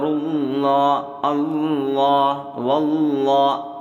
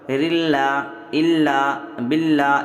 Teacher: زبر اور پیش ہوگا تو کیا ہوگا، لفظ اللہ کے لام کو پُر پڑھیں گے، زیر ہو تو باریک پڑھیں گے